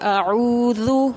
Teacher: او نہیں پڑھیں گے اس کو، اعوذ اس طرح سے پڑھیں گے۔ اس کے بعد جو ذال ہے وہ نرمی سے ادا کیا جاتا ہے، اس میں سیٹی والا ساؤنڈ بالکل بھی نہیں آنا چاہیے